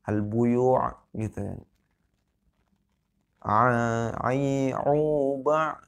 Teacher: Jadi berbeda hamzah dengan ain gitu. Ain ya letaknya ada di kerongkongan.